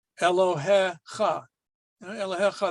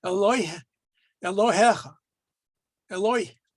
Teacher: the yud is not pronounced after the eh.